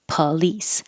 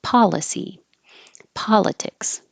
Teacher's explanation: it looks like an O but it sounds like an uh